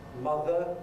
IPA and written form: ˈmʌðə (Mother)